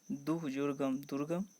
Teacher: अब ये जो है विसर्ग संधि का नियम में देखोगे, विसर्ग का ओ हो जाना, अगर कोई विसर्ग है तो विसर्ग का ओ हो जाता है, जैसे सरह जुर्ज सरोज। विसर्ग का र हो जाना